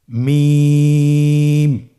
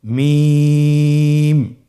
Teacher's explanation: দুই ঠোট চেপে ধরে আমরা উচ্চারণ করব